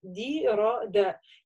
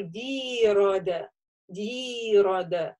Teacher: Каждый слог, вот этот буква с огласовкой, они должны быть одной длины. То есть это независимо от огласовки и от буквы.